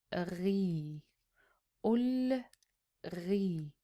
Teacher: You can tell that when I say Alif MaQsoura, it is a long vowel A, and when I say Ya, it's a long vowel E. Just the dots and that little tiny dash over here, or little tiny stick that we put on the Alif MaQsoura, indicates the length of this letter.